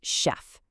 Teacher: It comes from French, so that ch makes a soft sh sound.